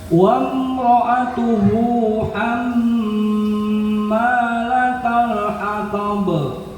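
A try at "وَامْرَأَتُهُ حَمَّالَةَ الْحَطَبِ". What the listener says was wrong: Ya, punten Bapak, hamnya agak panjangan sedikit karena sesuai temponya, kalau begitu dia nggak terlalu panjang. Hammalatal hatab.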